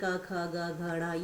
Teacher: कुछ वर्ण होते हैं वो कंठ यानी गले से बोले जाते हैं